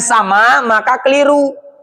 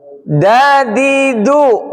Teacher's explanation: Perhatikan, huruf dal dengan dot ini kalau mengucapkannya sama maka keliru. Dadidu, ujung lidah bertemu pangkal gigi seri atas. Di gigi tapi di tempat tumbuhnya gigi.